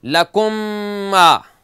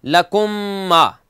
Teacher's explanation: دونوں میموں کو علیحدہ نہیں پڑھیں گے، ایک ہی میم پڑھیں گے تشدید کے ساتھ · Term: ادغام شفوی